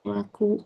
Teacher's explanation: dia kena dekat tengah halkum bukan dekat kat hidung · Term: huruf ain